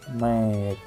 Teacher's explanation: The vowel sound of make is actually a double vowel or diphthong make, and is represented by a composite symbol make.